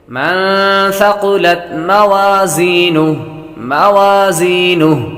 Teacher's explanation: مَن ثَقُلَتْ مَوَازِينُهُ نون ساکن ہے، نون ساکن کے بعد سا حروف اخفا میں سے آ رہا تو غنہ کریں گے۔ قاف مستعلیہ میں سے ہے، اس لیے اس کو پر پڑھیں گے۔